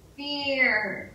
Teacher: Because it's the combination of the E vowel, which the mouth wants to close on that and get all tense, and an R